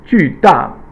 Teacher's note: all fourth tone, which is the falling tone